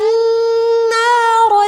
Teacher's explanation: نارا میں نون مشدد ہے، غنہ کریں گے